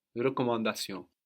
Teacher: the N on the end of recommand is half silent